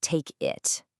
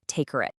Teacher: native speakers just naturally push that final K sound right onto the I, so it all flows together like one word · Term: linking